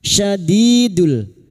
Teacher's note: huruf shin wastul lisan atau tengah lidah